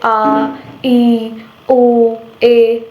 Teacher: ह्रस्व स्वरों से 2 गुना समय लगता है उसको हम दीर्घ स्वर कहते हैं